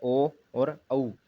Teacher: ओष्ठ्य और कंठ्य, ओ औ, होठों गोल ध्वनि कंठ से। होठ तो गोल होते हैं और ध्वनि रहती है कंठ से।